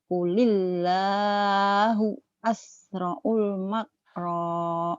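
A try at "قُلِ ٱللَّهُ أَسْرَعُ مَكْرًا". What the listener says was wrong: Bukan asra'ul. Nggak ada lam. Asra'u makra.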